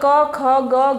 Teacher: इसमें हवा कंठ से टकराकर सीधा बाहर निकलती है तो इसको बोलते हैं हम कंठ तो मतलब ये हुआ कि